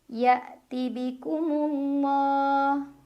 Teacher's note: maka cara membacanya alif lam tidak dibaca · Lam jalalah dibaca tafkhim karena huruf sebelumnya mim barisnya dhammah, maka bacanya tebal Allah dengan menaikkan pangkal lidah. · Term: Alif Lam Syamsiah